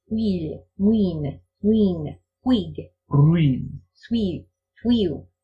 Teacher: in Sindarin you put a little heavier on the u than the I. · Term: diphthong we